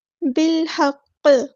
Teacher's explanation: قاف پہ جب ہم وقف کریں گے تو یہ ساکن ہو جائے گا، لیکن شد والا حروف ہے تو اسٹرونگیسٹ یہاں پہ ہمارا قلقلہ ہوگا ، اور ہم نے یہاں پہ تھوڑی دیر رکنا ہے۔ بالحق